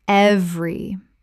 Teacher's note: Two syllables in natural speech. The middle vowel is dropped almost universally.